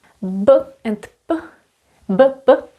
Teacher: For example, we have these two sounds, b, p. They are created exactly in the same place. We need the two lips